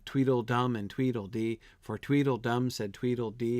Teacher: the whole thing is generally iambic right has that iambic feel